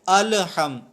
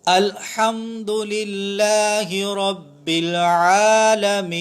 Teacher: لام کے اندر قلقلہ پیدا کیے بغیر ہم انشاءاللہ پڑھیں گے